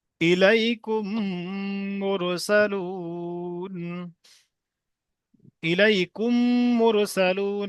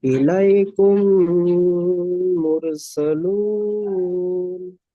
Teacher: মিম সাকিনের পরে মিম এসছে, তাই মিমকে মিমের সাথে মিলিয়ে একালি পরিমাণ গণ্যা সহ পড়তে হবে। একে ঈদগামে সাফাবি বলে।